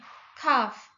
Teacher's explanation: Kaf infijar. Dia itu ada letupan ketika mengeluarkan hurufnya. Kaf mahmud dan tidak ada getaran.